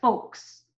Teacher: Remember, we don't pronounce that L.